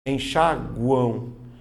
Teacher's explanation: Veja que a letra U é pronunciada. Então ela é uma semivogal. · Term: tritongo nasal